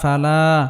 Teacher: খালি আলিফ মাদার হরফ এক আলিফ পরিমাণ লম্বা করে টানতে হবে